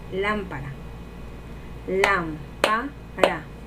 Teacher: Lámpara. Lam es la sílaba tónica porque tiene acento y es la más fuerte de esa palabra. Y para es las sílabas átonas porque no llevan acento y son las sílabas que no tienen tanta carga de voz.